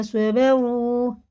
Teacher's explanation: گے، اسے سواد ہے نا، سین نہیں ہے، صبروا راپور ہے، واو مدہ ہے، یہاں پہ پیش ہے تو الٹے پیش کی طرح اسے کھینچ کے پڑھنا ہوگا ، اور راپور ہے، پر کے معنی ہوتے ہیں موٹا منہ